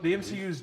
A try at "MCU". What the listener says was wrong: MCU. You said T. You said T. There's a slur.